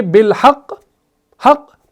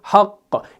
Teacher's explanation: कौफ को थोड़ा आगे ले जाएंगे वफ की सूरत में ताकि कौफ के ऊपर जो शद है वो जाहिर हो जाए और सुनने वाले को भी यह पता चले कि भाई इसने जब हक पढ़ा तो सुनने वाले को यह पता चले कि भाई हक़ के कौफ के ऊपर तशदीद है।